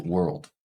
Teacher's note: those ER sounds in stressed syllables same with the world world this is just one vowel sound followed by an l and a d but that vowel uh has a little bit of R coloring on it